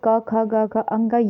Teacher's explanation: फिर क ख ग घ अंग ये सब क्या है? कंठ से उच्चरित होने वाले वर्ण हैं